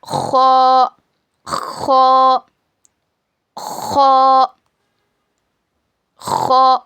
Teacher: हलक के ऊपर वाले सूखे हिस्से से खो अदा होगा। · जब पढ़ेंगे ना खो को, तो ऐसा खुरदुरी जैसी आवाज आना, खो खो खो खो।